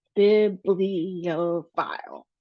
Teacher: So we have bibliophile, which is 4 syllables. And then we have the stress at the beginning of the word, the B, as well as at the F sound, so the PH sound.